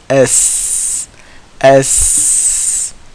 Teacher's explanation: It is the front tip of the tongue right here, touching the back of the bottom front two teeth. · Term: sin